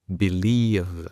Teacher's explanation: Al final hay una V vibrante, que en español es complicado porque casi ni existe.